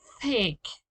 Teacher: It's similar to an S, but not exactly an S. This sound is voiceless. It is made only with air.